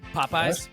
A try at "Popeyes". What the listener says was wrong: Just Popeyes. I feel like y'all are adding an H after the second P. Popeyes.